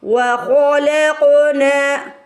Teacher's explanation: وخلقنا، قوف پہ ساکن آ گیا ہے، قوف پہ قلقلہ کرنا ہے. ہمیں قوف کو موٹا بھی پڑھنا ہے، قوف کو ہلا کے بھی ادا کرنا ہے